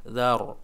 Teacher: bibir bawah kita didorong, ya, ke depan, dzar, begitu, sehingga suaranya bulat menghasilkan ro yang tebal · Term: ro tafkhim